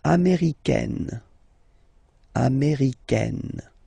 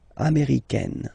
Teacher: it's really open, this A-I, américaine